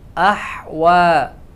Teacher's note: واو کے اوپر کھڑا زبر ہے، اس کو 1 الف کے برابر لمبا کریں گے ، کیونکہ کھڑا زبر جو ہے وہ الف مدہ کی آواز